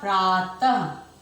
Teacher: इस विसर्ग को बोलने के लिए ह वर्ण का प्रयोग करते हैं।